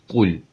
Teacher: U hərfi ü də deyil, uzun da deyil.